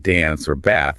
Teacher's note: The a sound in words like dance or bath is usually the flat a like in the word cat.